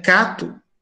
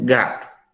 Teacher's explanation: Que a percepção auditiva dela não é suficiente para perceber que em cato ela tem uma consoante velar surda, mas em gato esse G é uma consoante velar sonora.